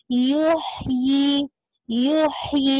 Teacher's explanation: ये middle of throat से अदा हो रहा है, आपको पिंचिंग सी कैफियत फील होगी, तो आपको पता चलेगा, यू ही पढ़ देंगे, यू ही ये सही नहीं है, यू ही ठीक है इंशाल्लाह।